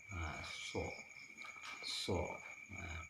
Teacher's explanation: Huruf so atau huruf sod seperti huruf sin, namun dia lebih tebal, sedikit dimonyongkan. So. Kalau dalam bahasa Indonesianya itu hurufnya S H O D.